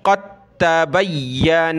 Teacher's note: قد تا پڑھیں گے، قاف تا زبر قد، دال کو چھوڑ دیں